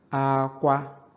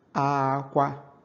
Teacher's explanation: And we have akwa, which is high, high.